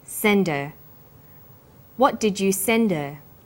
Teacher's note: send her send is the strong form and her is weak because her is not stressed we drop the initial H sound